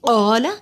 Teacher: قالا قاف دو نقطوں والا موٹا پڑا جاتا ہے، قا کو لمبا کیا، الف سے پہلے زبر ہے، حروف مدے الف کے برابر لمبا ہوگا۔